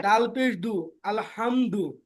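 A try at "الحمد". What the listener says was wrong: মাশাল্লাহ সুন্দর হইছে ভাই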